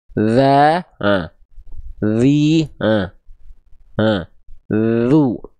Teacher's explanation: huruf dzal itu dilafalkan bukan betul-betul digigit